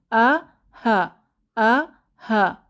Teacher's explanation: গলার শুরু থেকে বের হওয়া দুটি হরফ হামজাহ এবং হা